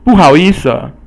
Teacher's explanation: It has the fourth tone, which is 不, and is a falling tone.